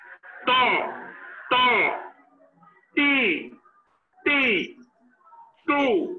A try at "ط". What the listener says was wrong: জবরের উচ্চারণ জবরের উচ্চারণটা একটু হইতেছে, আর একটু মোটা করার চেষ্টা করতে হবে, কিন্তু জেরের মাঝে মনে হইতেছে মোটা হইতেছে না, তো জেরের ক্ষেত্রে আর একটু মোটা করতে হবে। জেরের মাঝে মোটার পরিমাণটা কম।